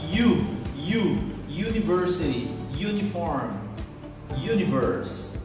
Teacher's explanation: O início dessa palavra, university, ela começa com um som muito parecido com a palavra você no inglês. Toda vez que uma palavra iniciar com o U, com a letra U, mas você pronunciar you, esse é o som de uma semivogal. Na verdade, o semivogal Y, ok?